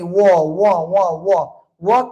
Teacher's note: व के वर्ण के उच्चारण दांत और ओठ दोनों से हो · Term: दंतोष् वर्ण